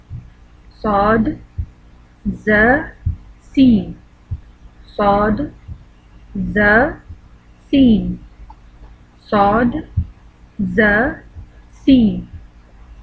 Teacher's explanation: زبان کی نوک سامنے کے اوپر اور نیچے دانتوں کے اندرونی کناروں سے لگے تو یہ حروف ادا ہوں گے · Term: حروف صغریہ